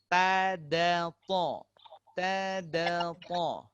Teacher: Ini sama-sama dari huruf hujung lidah berjumpa dengan apa? Tempat tumbuhnya gigi kecil atas. Gigi seri atas.